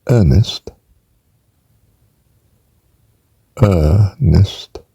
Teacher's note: there is no R really, only historically